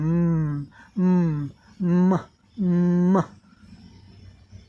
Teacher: Lip closed बंद हो गए हैं। एयर गोज थ्रू नोज, और हवा नाक से होकर बाहर निकल रही है। · Lips are together and there is voicing, यहाँ गले में कंपन होती है।